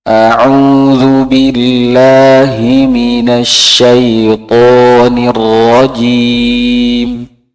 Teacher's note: Haknya lebih berat lagi, Pak, lebih ke dalam.